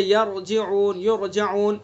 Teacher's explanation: را ساکن سے پہلے زبر پیش ہوگا تو را کو پر پڑھیں گے، جیسے یرجعون، یرجعون.